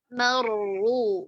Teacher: रो साकिन को तवस्सुत का टाइम देंगे और इसको पुर भी करेंगे.